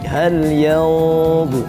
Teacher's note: karena nun sukun bertemu dengan huruf dha yang isti'la, maka bersiap-siap ya ikhfanya di situ